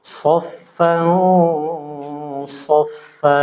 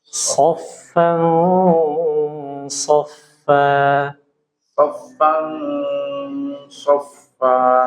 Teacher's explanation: ah perhatikan nih di sini eh tanwin bertemu huruf Shad ya tanwin bertemu huruf Shad ini menunjukkan apa harus dibaca tebal tafkim ya jadi ikhfa tapi ikhfanya itu tebal